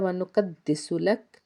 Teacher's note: بِحَمْدِكَ وَنُقَدِّسُ لَكَ، قاف حرف مستعلیہ کا حرف پر پڑھیں گے، دال کو 2 بار ادا کریں گے کیونکہ اس کے اوپر تشدید کا سائن ہے۔